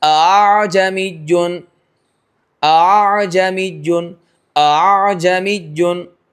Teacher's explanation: हमजा और अलिफ के मखरज के दरमियान आ जमीजुन आ जमीजुन आ जमीजुन अ आ जमीजुन समझ में आ रहा है तो ये हमजा में तसील वाजिब हुई एक ही हमजा से यूं समझो कि मद करके ले आए या कुछ खींच के चले आए थोड़ी सी हमजा की आवाज भी आए पता चले कि हमजा भी अदा हो रहा है और नरम भी अदा होना चाहिए ऐसा लगे कि अलीिफ मद्दा अदा हो रहा है जमीजुन है ना उसको कहेंगे तस्हील ये वाजिब है।